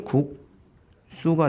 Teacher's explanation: 대표적인 예가 국수 같은 게 있습니다. 기역 받침 뒤에 시옷이란 예사 소리 오니까 발음이 국수가 됐죠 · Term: 된소리대기